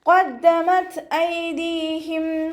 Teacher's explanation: ഖാഫ് ഇസ്തിഅലാൻ്റെ ലെറ്ററാണ്, ഉയർത്തി ഉച്ചരിക്കേണ്ട 7 അക്ഷരങ്ങളിൽപ്പെട്ടതാണ് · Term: തഫ്ഹീം